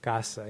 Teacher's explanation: la A de la primera sílaba se puede medir que es un poquito más larga que la A de la segunda sílaba. Es casa, es un efecto del acento.